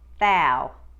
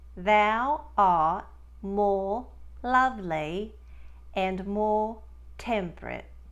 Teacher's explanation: the ow in thou will become wider and start with the cat vowel sound